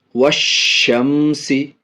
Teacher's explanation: number 2، الف لام اگر حروف شمسی کے شروع میں ہوں تو الف اور لام کو نہ پڑھیں گے، یعنی یہاں الف اور لام دونوں نہیں پڑھا جائے گا، بلکہ بعد والے حروف سے ملا کر پڑھیں گے